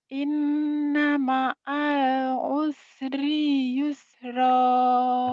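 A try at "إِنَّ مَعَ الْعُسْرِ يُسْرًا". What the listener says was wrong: Tapi rinya pendek. Ayo. Rinya pendek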